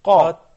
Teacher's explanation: some heaviness on the letter قاف because it is a مفخم letter